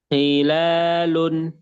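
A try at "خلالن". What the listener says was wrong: Nah, sukunya yang jelas ya. Tadi berharokatnya yang kurang jelas. Kalau sukunya sudah jelas. Nah, jadi nanti PR-nya ketika berharokat, kho-nya lebih jelaskan lagi.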